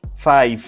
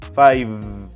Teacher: It must finish with the final V sound. Most people pronounce it with an F sound, but it must be V sound.